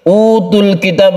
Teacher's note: baunya ini kita baca panjang karena ada sukun waw, ini kita sebut dengan mad tabi'i